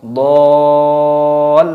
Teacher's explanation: ada mad wajib muttasil yang bertemu dengan huruf yang ditasid, jadi dipanjangkan dulu baru diidghamkan. Do panjang dulu masuk ke idgham.